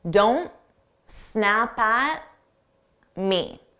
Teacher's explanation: If I pronounce the T on don't, I have to take a pause to pronounce that T. So I just won't say it. · So I make those T's silent. I drop the T's. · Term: drop sounds